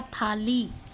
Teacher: शब्द है स्थाली। स्थाली का हमने स गायब कर दिया, बना दिया थाली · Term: व्यंजन लोप